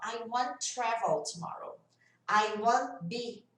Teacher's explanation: I want, ainda mais que tem dois T's aqui, ó. I want travel tomorrow. I want be. O T acaba sumindo. Então, isolado, o T até aparece ali, bem sutil.